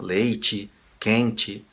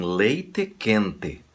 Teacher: Antes de acabar, lembre-se de uma coisa. Enquanto na maioria dos estados brasileiros nós fazemos o E soar I no final das palavras, quando ela é uma átona